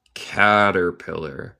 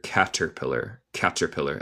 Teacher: Caterpillar. Y esto es mi acento estadounidense, que yo digo la T más como R española. También se puede decir caterpillar.